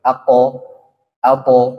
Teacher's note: Ya, suaranya lempeng. Suaranya itu tidak ada mengeluarkan nafas atau udara. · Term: jahar